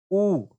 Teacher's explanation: ऊ का जो आकार होता है एक वृत्त के आकार होता है। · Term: वृत्त मुखी